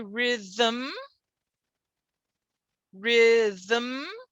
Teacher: m can be syllabic without a vowel